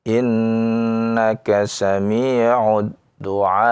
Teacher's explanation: dengan diberi naber, tekanan, maka ya dia berhenti dengan hamzah